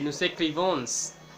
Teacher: no se pronuncia la S al final en la conjugación